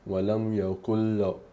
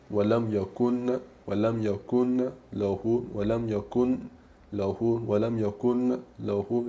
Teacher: Sentite che non dico yakun, non faccio sentire, non faccio sentire lo skun del nun, ma è come se non ci fosse